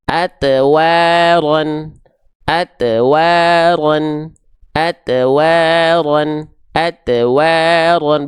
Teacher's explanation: Huruf to itu termasuk ke dalam huruf yang tebal. Maka dipantulkan dengan keadaan yang tebal, bukan dengan pantulan yang keadaannya tipis. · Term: huruf to sukun